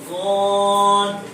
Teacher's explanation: ضاد کا مخرج زبان کی کروٹ اور اس کے مقابل اوپر کی ڈاڑوں کی جڑ